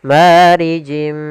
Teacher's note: Kemudian marijim mi sama di sini ada kasratain bertemu dengan huruf mim yaitu idgam bighunah. Kita masukkan lagi tanwinnya ke huruf mim dan ditahan gunahnya. · Kita masukkan lagi tanwinnya ke huruf mim dan ditahan gunnahnya. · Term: idgham bi gunnah